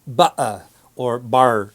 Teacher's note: certain speakers who in a very relaxed way will leave out the t completely